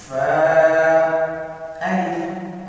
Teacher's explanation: فا کے ساتھ الف، اس کو لمبا نہیں کرنا چاہتا، صرف دو حرکات کے برابر